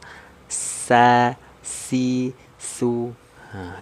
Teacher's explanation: karena dia huruf tipis maka lidahnya turun terhampar. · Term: istifal